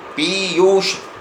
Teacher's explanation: जब उच्चारण करते हैं तो प पर ज़्यादा जोर देते हैं, य पर ऊ की मात्रा में ज़्यादा जोर देते हैं, इसलिए दोनों दीर्घ मात्राएं होंगी